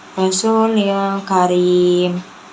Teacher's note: ikhfa hakiki karena tanwin itu bertemu dengan huruf kaf, dibacanya samar